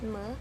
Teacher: the mouth is blocked by closing the two lips the soft palate is down so the air escapes through the nose descriptions of my distinctive features mo is consonantal nasal anterior voice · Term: bilabial nasal